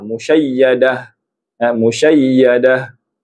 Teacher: Ini ta marbutah. Ta marbutah. Ta yang bertanda bulat. Bila diwakafkan sebutan dia menjadi huruf ha. Asalnya musyayyadatin sebutan ta.